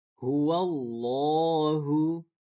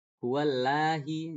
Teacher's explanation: lam mufakhomah, yaitu lam yang dibaca tebal. Nah, dia huruf lam tapi dibacanya tebal, yaitu contoh misalnya di kalau di kita nggak ada kecuali lafaz Allah, lo, itu dibaca tebal.